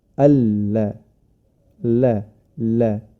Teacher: sedangkan huruf lam dia melebar ya dari sisi ee lidah dari sisi dari ujung Sisi lidah